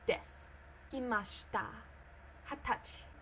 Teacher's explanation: the vowels are sometimes so short that they are non-existent.